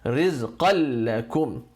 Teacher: the n of the qan, n at the end, disappears. You just merge it with the next letter, no gunna. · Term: idgham bila gunna